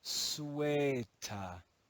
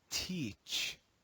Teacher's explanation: in Modern English the long air changes to the sound e and the final schwa is dropped